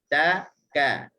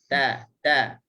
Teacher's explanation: kalau kita letak tangan depan, kita akan rasa ada angin. Angin sikit. Tu hasil daripada huruf ta kita sebut ada unsur meludah sikit.